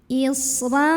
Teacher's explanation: Isran, ra-nya ini dibunyikan secara tafkhim karena ra-nya berbaris di atas fathah tanwin. Maka cara membunyikan ra-nya adalah dengan cara mengangkat pangkal lidah kita.